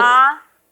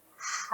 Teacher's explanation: A itu tertahan kalau H mengalir. Yang mengalir, yang tertahan A.